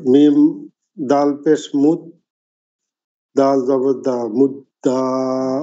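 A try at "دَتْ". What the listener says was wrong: হ্যাঁ, দাল জবর দা নয়। দাল জবর দা পরে আবার তা আছে। দাল তা জবর দাত। দাল তা দাত। যজমালা হরফ কি? ডান দিকের হরকতের সঙ্গে পড়তে হয়। তা হচ্ছে যজমালা হরফ। তার উপরে যজম আছে। তা যজম বিশিষ্ট হরফ। ডান দিকের হরকতের সঙ্গে পড়তে হবে। দালের হরকতের সাথে। দাল তা জবর দাত।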